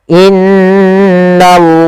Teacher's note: kita membaca dengan lam tebal pada lafal Allah